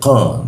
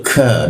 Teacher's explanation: ko terhambat karena lidahnya dinaikkan. Lalu ka ada hembusannya karena lidahnya diturunkan.